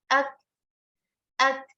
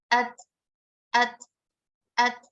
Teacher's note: pada kaf dan ta itu udara atau anginnya itu keluar dengan terbatas, tidak sebanyak pada huruf-huruf lain.